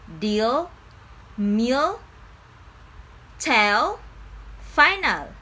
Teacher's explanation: If it's one of the central or front vowels, like in the words deal, meal, tell, or final, pronounce the L that's slightly darker than the regular one. It's okay to gently touch your alveolar ridge